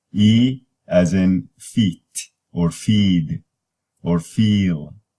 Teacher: So E is a high front, tense, unrounded vowel.